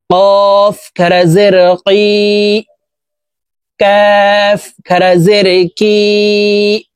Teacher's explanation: কাফ হরফের উচ্চারণ জিহ্বার গোড়া থেকে একটু আগে বাড়াইয়া তার বরাবর উপরের তালুর সঙ্গে লাগাইয়া উচ্চারণ করে পড়তে হবে